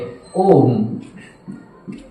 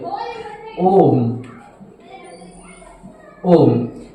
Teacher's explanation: अधिक समय लगता है उन्हें कुलत स्वर कहते हैं इन अर्थात तीन मात्रा के बराबर समय लगता है